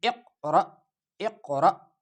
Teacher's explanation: جب ایسے حمزہ ساکنہ ہو تو اس کو ادا کرتے وقت ایک جھٹکا سا لگتا ہے